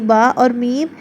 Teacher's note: جب دونوں ہونٹوں کو ملاتے ہیں تو آپس میں ملنے سے با اور میم ادا ہوتے ہیں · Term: حروف شفویہ